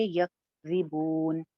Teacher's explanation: یک آواز سانس جو ہے نا وہ آپ کی چلتی ہوئی رہے گی. آواز تو رک جاتی ہے کاف کے اوپر لیکن سانس جاری رہتا ہے. سانس ہلکا سا چلائیں گے.